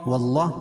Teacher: اللہ کا لام پور پڑھا جائے گا، کیوں؟ اس لیے کہ اللہ کے لام سے پہلے زبر یا پیش ہو تو اللہ کا لام پور پڑھا جاتا ہے.